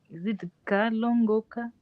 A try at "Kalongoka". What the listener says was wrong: Bravo, yes.